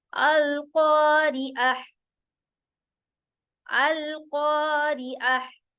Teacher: कॉ मोटा होगा, जिसमें स्क्रैचिंग साउंड नहीं होगी